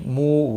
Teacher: مو واو مدہ ہے، ایک الف کے برابر کھینچ کر پڑھیں گے